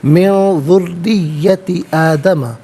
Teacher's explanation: ذریتی میں را کے نیچے زیر ہے، را کو باریک کر کے پڑھا جائے گا، مشدد ہے تو جماؤں کے ساتھ پڑھیں گے۔